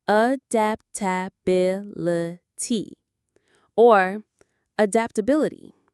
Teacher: The stress is on the bil syllable.